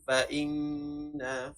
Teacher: Wajibal gunnah baca secara dengung 2 harakat dengan bacaan fa'inna.